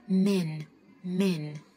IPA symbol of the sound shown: æ